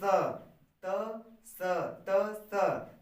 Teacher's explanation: जब बोलेंगे स दंत स, तो जैसे बोलते हैं त, उस तरह बोलिए स